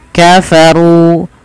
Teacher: runya dibaca dengan tebal dan di sini ada ro tafkhim karena ro berharakat dammah